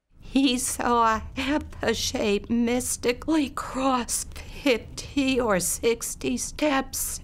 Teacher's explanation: she's kind of fighting with her own vocal folds to keep them adducted enough to phonate, but they're trying to open, and therefore she's got that breathy sort of voice